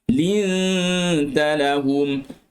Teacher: Nun mati bertemu dengan tak, dengung dalam keadaan yang nipis.